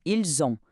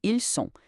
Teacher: a pronúncia exige um som de Z conectando o S final ao O inicial da palavra seguinte